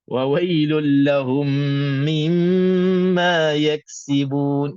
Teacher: itu tak wujud hilang habis wailahumakss di sini pun sama juga huruf Kaf kena zahirkan sebahagian sebahagian sifat hams itu jangan tenggelam terus